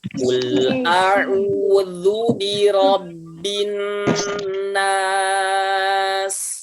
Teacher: Jadi syaratnya sudah terpenuhi, gunnah masuk ke dalam hidung dan ditahan 2 harokat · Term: gunnah musyaddadah